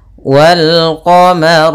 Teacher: huruf q maka lamnya dibaca dengan jelas · rnya tebal karena ro berharakat fathah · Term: alif lam Qariah, ro-nya tebal